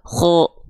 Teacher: kho itu ketika fathah nggak dibaca dengan vokal A, tapi terdengar condong cenderung seperti vokal O. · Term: tafkhim, tebal